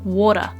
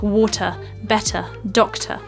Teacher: they all sound like an actual T sound so for example in the word water the T in the